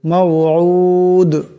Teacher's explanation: এখানে দমসালে দাল সাকিন হয়ে যাবে। দাল কলকলার হরফ, আওয়াজটিতে একটি টক্কর খাবে।